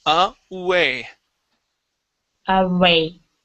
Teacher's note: focusing on pronouncing that oo instead of a V sound